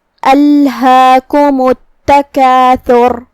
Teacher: یہاں حرف الہا ہے تو اس کا دھیان رہے. ہا کے بعد چھوٹا سا مد ہے. یہاں مد طبیعی ہے.